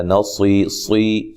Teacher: صاد کو موٹا ادا کرنا ہے، اور یا مدہ ہے، وقف کی صورت میں مد کر سکتے ہیں۔